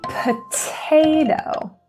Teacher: we have the P at the beginning that P is aspirated